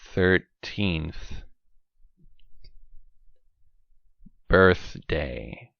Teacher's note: When we have numbers like 4th, 5th, 10th, 13th, that is also the voiceless th sound that you hear. Okay? So, again, watch my mouth, tip of tongue, between teeth.